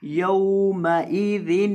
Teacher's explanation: ذال کے اندر سیٹی کی آواز پیدا نہیں ہونی چاہیے.